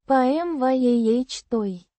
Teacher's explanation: With the stress on the second syllable.